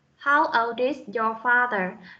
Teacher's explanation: Cái âm D và âm I. Vì âm I là nguyên âm cho nên chúng ta sẽ được nối âm.